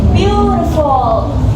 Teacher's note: It also has three syllables, but this time the first syllable is stressed or strong, and the next two are unstressed or soft. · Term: dactyl